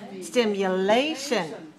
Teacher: stimulation four syllables stress the third